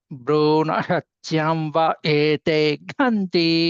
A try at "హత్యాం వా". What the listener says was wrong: హత్యాం వా దీర్ఘం చెప్పాలి. హత్యాం వా భ్రూణ హత్యాం వా